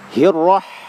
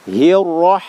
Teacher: Ro-nya tebal ya. Ro itu secara sifat hurufnya takrir ya. Jadi takrir ini maksudnya bergetar ya. Tapi bergetarnya ini tidak hir ya, tidak ya, tapi bergetarnya itu dia apa cuman sekali ya.